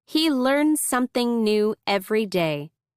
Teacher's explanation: The S is said a little longer. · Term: linking